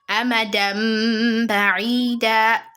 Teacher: You are joining the dal together with the ba, so you need to forget about the mad